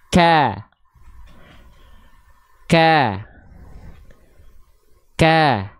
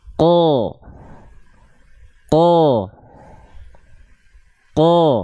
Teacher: huruf Kaf vokalnya menjadi a karena dia turun pangkal lidahnya kalau Q pangkal lidahnya dia masih nongkrong di atas sehingga ketika keluar momentum vokal fathahnya dia keluar jadinya o paham